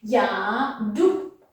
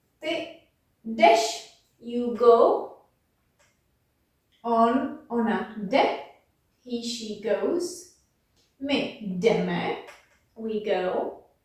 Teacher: when we have a J followed by a consonant at the beginning, we usually don't pronounce that J